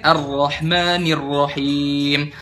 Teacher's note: sifat takrir pada penyebutan huruf ro. Takrir itu getaran ya, yang ada seolah-olah huruf ro itu seperti huruf waw atau to.